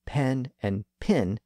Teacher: pronounced two slightly different vowel sounds the same way for example in much of the American South the vowel sounds in pen and pin had merged so that they were both pronounced as pin